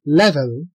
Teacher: the final “l” is pulled backward because of the preceding “e” that it is coarticulated with · The initial “l” sounds brighter while the final “l” is called a dark “l”